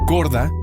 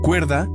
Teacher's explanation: Ejemplo, corda, cuerda, la D intervocálica se transforma en una R